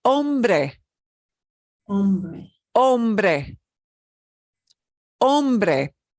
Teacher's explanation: You will not hear the H.